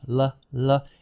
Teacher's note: your tongue touches up in the gum ridge behind your teeth. La, air flows around the side of the tongue.